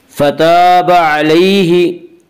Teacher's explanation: فتاب علیہ، فتاب الف مدہ، الف میں شاہ مدہ ہوتا ہے، الف سے پہلے زبر ہوتا ہے، الف مدہ کو ایک الف کے برابر کھینچ کر پڑھیں گے۔ علیہ یالین، یالین وہ یا جو ساکن ہو اس سے پہلے اور اس سے پہلے زبر ہو، یالین کو ایک الف، یالین کو نرم آواز کے ساتھ پڑھیں گے۔